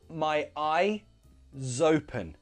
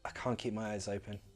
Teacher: we would link that S... it's actually a Z sound to the next vowel sound